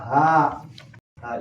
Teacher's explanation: ha ieu makhrajna di mana boga sing tikoro nyanding kana dada lantaran makhrajna di tikoro maka ha disebut huruf halak.